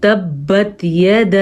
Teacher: با کے اوپر جھٹکے کی کیفیت پیدا ہو رہی ہے شد کی وجہ سے، حروف قلقلہ میں ہے با۔